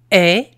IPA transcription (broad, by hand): ɛ